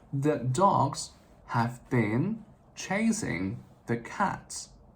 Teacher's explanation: each sentence has got 3 stressed syllables. Dogs, chase, and cats.